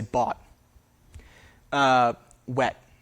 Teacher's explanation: We don't really pronounce a T in bought. There's kind of no consonant there at all. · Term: deletion of the T